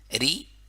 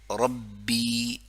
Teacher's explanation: را کو باریکی سے, کیونکہ را مکسورہ ہے, جب را کے نیچے کسرہ ہو تو باریکی سے